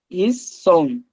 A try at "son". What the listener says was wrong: স, নটা বলবেন না, নটাকে উচ্চারণ করবেন না, স।